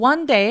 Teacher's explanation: one day 앞에 강세 주시고요